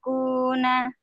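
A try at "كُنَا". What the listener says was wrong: Kuna, agak turun sedikit. Kuna, kaini kuna. Kuna. Kana kaununa kina kaini kuna. Coba ujungnya, Bu. Kana kaununa.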